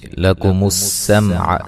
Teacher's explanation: سین کو باریک سیٹی سے ادا کریں گے، یہاں میم ساکن کا اظہار ہے، غنہ نہیں کریں گے، واللام کو ہلانا نہیں ہے، حروف قلقلہ کے سوا کسی بھی حرف کو ہلا کے نہیں پڑھنا۔